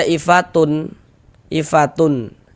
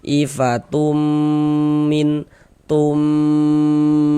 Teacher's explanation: Kemudian di bagian tumnya itu suaranya itu kita tahan ya, kita panjangkan sebentar, kita gunnahkan, kita dengungkan. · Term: idgham bi gunnah